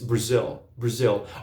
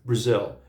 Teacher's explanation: a segunda sílaba, que é tônica, quase que eclipsa a primeira, Brazil. Eu sou do Brasil, I'm from Brazil.